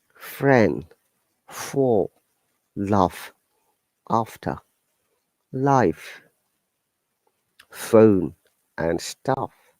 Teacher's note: the f sound is unvoiced the vocal cords don't vibrate during its production is the counterpart of the voiced v sound to create the